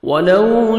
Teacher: واو لین ہے، لپس کو راؤنڈ میں لے کے جائیں گے تاکہ وہ اچھی طرح ادا ہو، نرمی سے ادا کریں گے.